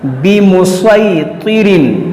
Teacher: देखिए स्वाद से पढ़ेंगे और स्वाद हुरूफ़ मुस्तालिया है, इसको मोटा करेंगे